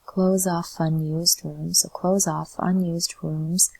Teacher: So the S sounds like a Z here, so close off. And then F and U can be connected.